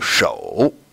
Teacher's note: the third tone is going to go down and up, right? So that, again, is going to touch the bottom of my register.